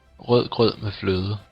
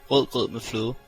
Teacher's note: One trap encountered by English speakers is the soft or silent D. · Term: soft D